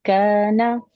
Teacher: first one है मुतहर्रिक, इसमें गुन्ना नहीं होगा